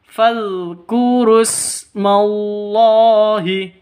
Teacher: makanya ini tidak dibaca jadi panjang ini tidak dibaca semuanya wau ru awalnya panjang bertemu dengan ee Hamzah wasal maka tidak dianggap langsung ke sinnya · Allahi lafzul jalalah ada di tengah panjang hanya dua ketukan